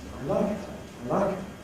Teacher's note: Like is stressed. I and her are unstressed.